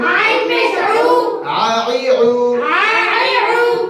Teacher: হলকের মাঝখান থেকে আইন হরফটি উচ্চারিত হয়, তাহলে হলকের মাঝখান থেকে আমরা একটু প্রেসার দেব হলকের মাঝখানে, ঠিক আছে।